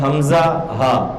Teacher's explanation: یہ دونوں حلق کے اس حصے سے ادا ہوں گے جو سینے کی طرف ہے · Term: حروف حلقی